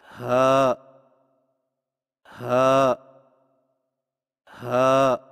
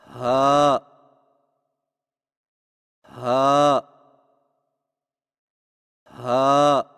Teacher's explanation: ہا کی ادائیگی میں زبان کی جڑ کو حلق کی طرف دبائے بغیر باریک اور بغیر رگڑ کھاتی سانس میں پڑھیں